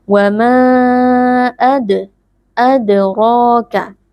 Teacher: huruf dal sukunnya kita pantulkan sedikit suaranya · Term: qalqalah sughra